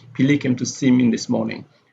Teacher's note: The stress is on Billy here.